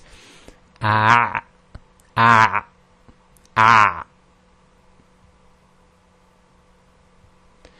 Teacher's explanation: squeezing the throat muscles, and you can feel your Adam's apple moving or up and down a bit when you squeeze the throat